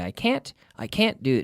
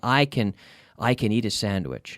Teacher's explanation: but intonation with can and can't is also very very important we stress can't but we don't usually stress can we usually put the emphasis on the the subject verb okay